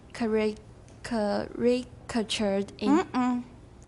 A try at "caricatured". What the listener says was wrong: Think of the word that I corrected a long time ago. Character. Characterize. This one's very similar. No, I don't say cat. I say care.